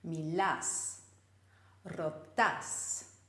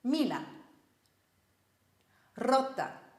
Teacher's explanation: in the second person the stress is on the end syllable Milas rotas whereas the imperative gets the stress on the second last syllable